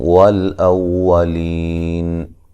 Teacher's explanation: حمزہ کو واو سے ملائیں گے سختی سے، ٹھیک ہے، او، اور واو کو جو ہے وہ ہونٹوں کو گول کرتے ہوئے ادا کرنا ہے، ٹھیک ہے جی۔